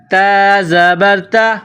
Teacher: نقطوں والی تا، اس کو باریک پڑھیں گے